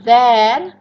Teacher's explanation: itu voice, dental, fricative. Bedanya cuma di voicingnya aja.